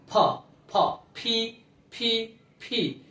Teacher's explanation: তারপরটা হচ্ছে ফি, এটা কি হবে ফি, যদিও আমরা প লিখি কিন্তু প উচ্চারণ হবে না, এটা হবে প এবং ফ এর মাঝামাঝি দুই ঠোঁট লাগিয়ে বাতাস বের করতে হবে